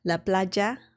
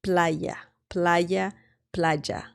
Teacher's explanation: Now, some Spanish speakers pronounce the letter Y differently. Some pronounce it as a J sound, similar to the English J sound.